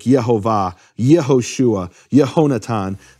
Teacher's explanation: that Yah, naturally turns into an eh at the beginning of a word like Yehovah, Yehoshua, Yehonatan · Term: pretonal shortening